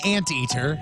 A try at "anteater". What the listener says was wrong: Pronounce all of the N's and the T's.